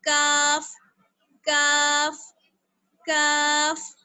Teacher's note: और काफ को पढ़ते वक्त हम कहाँ लगाएंगे, जुबान जो हमारा ऊपर का तालू है उसको उसके सख्त हिस्से पर लगाएंगे, तब अदा होगा काफ काफ काफ। काफ को पढ़ते वक्त थोड़ा सा आपको मुंह चीरा जाएगा और क्या होगा, बारीक सी साउंड निकलेगी इसकी